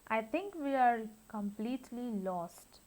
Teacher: falling intonation in which pitch of voice falls with time · after completely, the word lost is uttered with a fall. So that is falling intonation.